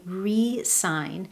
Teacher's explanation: when the stress is placed on the first syllable and I say re-sign, I'm putting my focus on the prefix re, which means again in English.